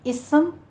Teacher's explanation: اسم سیٹی کے ساتھ آپ پڑھتے ہیں، سین کے ساتھ بن جاتا ہے